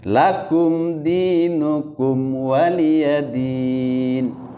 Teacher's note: Selain dari itu, mim sukun bertemu dengan mim dan mim sukun bertemu dengan ba, seperti yang tadi ini lakum, kemudian juga dinukum wa, itu adalah izhar mim. Ya, itu jangan ditahan-tahan, biasa aja.